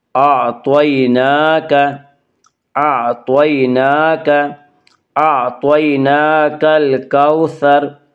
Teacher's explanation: نون کے اوپر کھڑا زبر ہے، کھڑا زبر کو 1 الف کے برابر کھینچ کر پڑھیں گے۔